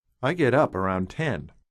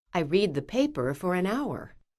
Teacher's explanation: the prepositions in these sentences around for and at are not stressed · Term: unstressed words